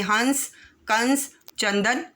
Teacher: ये ना तो स्वर हैं और ना ही व्यंजन। अनुस्वार में ध्वनि नाक से निकलकर शब्द के साथ लग जाती है, जैसे हंस, कंस, चंदन आदि।